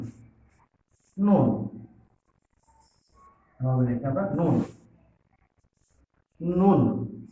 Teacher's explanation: জিহ্বার অগ্রভাগ দেখো তালুর সাথে লাগিয়ে উচ্চারিত হয়